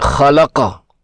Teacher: رکنے پر قاف کو کلکلا کر کے پڑھیں گے